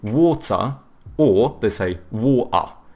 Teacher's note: the British, they tend to have either hard T's or they do like the glottal T, so but then they do a schwa instead of pronouncing the R